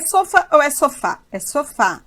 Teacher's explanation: a tonicidade caiu na última sílaba, terminou em A. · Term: oxítona